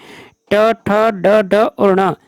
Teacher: ट वर्ग का उच्चारण स्थान सी, मूर्धा। ट वर्ग का उच्चारण स्थान मूर्धा होता है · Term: मूर्धन्य